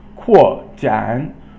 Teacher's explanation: qu is fourth tone and Jan is third tone